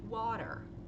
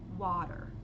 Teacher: é um som que a gente não tem no português é um meio termo entre a e o